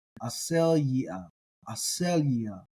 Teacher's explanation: The accent's not where I think a native English speaker would want it to be, which is on the ia.